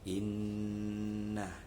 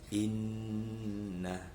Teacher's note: itu yang benar ya, dibaca dengan guna atau dengung